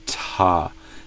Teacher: If though you want to say Thomas the way that I say Thomas in my American accent, I would blow out more air with the T sound.